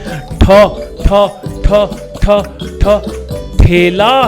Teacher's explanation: ये बनती है ट और ह के साथ मिलके